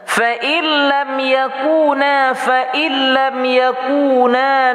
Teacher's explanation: nun mati bertemu dengan lam hukumnya idgham bila gunnah tidak berdengung. Yaku waw mati mad asli atau mad tab'i panjangnya 2 harakah.